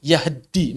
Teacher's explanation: Kemudian taknya idgham ke dalam dal. Taknya idgham ke dalam dal. Maka berarti dalnya ditasydid. Taknya hilang.